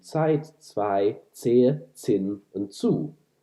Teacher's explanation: Here, you can see that there's a regular sound change, and the regular sound change has caused all instances of t to change into ts at the beginning of words. Ts here is an affricate. It starts out as a stop and becomes a fricative. So it's represented in German as a Z, but that Z is actually somewhat misleading.